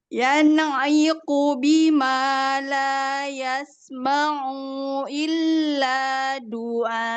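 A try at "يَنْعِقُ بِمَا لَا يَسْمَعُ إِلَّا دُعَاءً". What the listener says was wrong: A-nya 2 harokat, bukan 1. Oh, yang di sini 1 harokat, bukan 2. Doa gitu bacanya.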